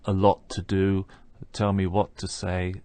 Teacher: we're hearing just one t sound there